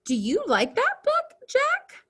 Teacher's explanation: our voices raised at the end of a sentence with a question mark